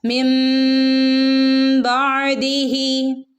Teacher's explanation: അപ്പം നമ്മളിവിടെ ചെയ്യേണ്ടത് ആ നൂനിനെ മിൻ എന്ന് പറയാതെ മീമിൻ്റെ ശബ്ദമാണ് നമ്മളവിടെ കൊടുക്കുന്നത്. നൂനിൻ്റെ ശബ്ദത്തെ മാറ്റി മീമിൻ്റെ ശബ്ദമാക്കും.